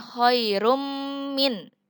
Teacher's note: Kalau idgham dibacanya khairum min. Dimasukkan nunnya yang seharusnya itu domah tain, dimasukkan ke mim. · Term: idgham biguna